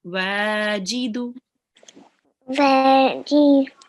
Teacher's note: there is an alif maddiya here. So we would prolong the wa for 2 seconds.